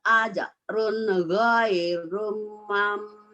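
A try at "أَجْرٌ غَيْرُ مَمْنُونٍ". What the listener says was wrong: Jangan ajrun ghairum, kalau ghairum ada tanwin. Ajrun ghairu mamnun. Wa amilu sholihati falahum ajrun ghairu mamnun. Ajrun ghairu mam, ajrun ghairu mam, ajrun ghairu mamnun, ajrun ghairu mamnun.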